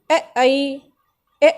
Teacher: बोलने में कंठ की भी आवश्यकता पड़ेगी और जो हमारी जीभ है वो तालु से टच होगी, इसीलिए कंठ तालव्य।